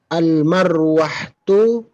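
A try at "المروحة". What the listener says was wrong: Mirwah. Al-mirwahatul jadidatu fil ghurfatil kabirati. Mirwahatu. A-nya dibaca fathah. Al-mirwahatul jadidatu.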